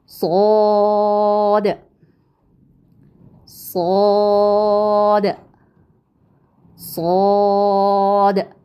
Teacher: मोटी और सीटी जैसी आवाज · فرق کیا ہے کہ سین باریک حرف میں سے تھا جبکہ صاد موٹا حرف ہے، اور موٹے حرف کے لیے ہم کیا کرتے ہیں آپ بتائیں گے. جی زبان کے پچھلے حصے کو تالو کی طرف بلند کرتے ہیں، تو پھر اس کی آواز کیسی ہوتی ہے؟ موٹی اور سیٹی جیسی آواز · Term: मोटा हर्फ